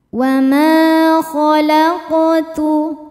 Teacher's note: Wa ma hukumnya mad tabi'i dhahiri sebab ada alif didahului harokat fathah. Cara bacanya panjang 2 harokat.